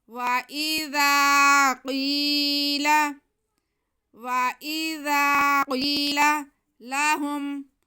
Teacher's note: قاف حروف مستعلیہ ہے، اس لیے اسے موٹا کر کے پڑھیں گے۔ وَإِذَا قِيلَ، وَإِذَا قِيلَ لَهُمْ، لام پہ زبر، ہا پہ پیش اور میم ساکن، پیش کو ہم میم کے ساتھ ملا لیں گے۔